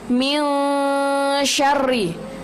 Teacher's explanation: Di ayat yang kedua yang perlu kita tekankan itu adalah min syarri. Nun mati ketemu huruf shin, itu hukum bacaannya adalah ikhfa. Nah, kalau ikhfa kita baca samar-samar.